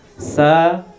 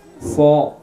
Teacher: Yang beda adalah huruf sin dibaca tipis, sedangkan huruf shad dibaca tebal.